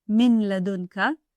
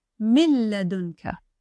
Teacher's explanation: In this phrase, the letter Lam comes after a Noon Sākin. It merges completely with the Noon Sākin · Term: merge completely